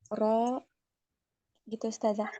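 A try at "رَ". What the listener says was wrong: Masih kurang tebal. Ro, naikkan lagi. Ro. Nah, harusnya dia ro. Naik.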